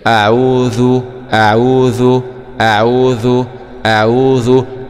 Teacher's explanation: والذال طبعا مخرجها طرف اللسان مع طرف الثنايا العليا